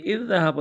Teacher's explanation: ایک ذال کو دوسرے کے اندر ہم نے ملا دیا، ہم نے مدغم کر دیا، تو اذ ذہب مشدد ہو گیا، اور ایک ذال کو ہم پڑھیں گے، ایک ذال پڑھا جائے گا۔ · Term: ادغام مثل تام